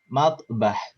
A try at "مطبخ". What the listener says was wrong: Nah, khoknya kurang kelihatan. Matbah.